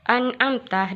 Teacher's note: An'amta dihukumi izhar halki karena nun sukun bertemu ain atau dibaca terang.